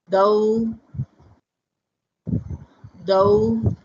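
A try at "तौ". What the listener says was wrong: Not thou. Tau. Tau.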